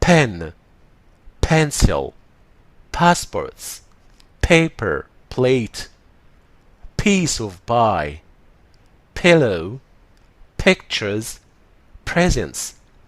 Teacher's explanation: لازم يبقى فيه صوت انفجار شديدة، بنسميها aspirated، وكأنك بتنطقها ب.